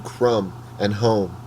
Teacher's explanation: There is the echo of the round vowel sound and the m sound, although it rings a little hollow. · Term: near rhyme